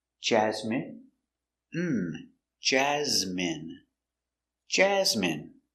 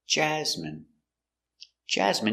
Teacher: Stress the first syllable.